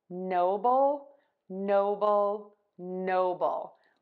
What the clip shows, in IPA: ˈnoʊbəl